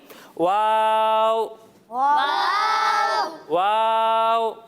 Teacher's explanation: اسے ہم کھینچ کر پڑھیں گے اور اسے ہم دونوں ہونٹوں کو گول کر کر ادا کریں گے